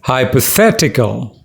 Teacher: there are five syllables and the third one is stressed